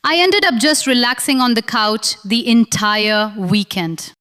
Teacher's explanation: Say that whole sentence out loud 3 times, focusing on connecting ended and up smoothly instead of pausing between them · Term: connect smoothly